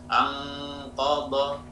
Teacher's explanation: Nun bertemu huruf isti'la, qaf, shad ya. Semuanya ikhfa'nya atau gunnahnya menjadi tebal ya.